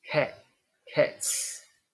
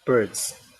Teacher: if we have a voiced ending, as in bird, then we have a voiced plural marker.